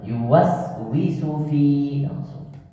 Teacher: allazi yuwaswisu wi-nya tidak panjang.